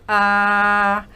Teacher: si uno dice a y se toca la garganta pueden hacerlo nuestros oyentes van a sentir unas vibraciones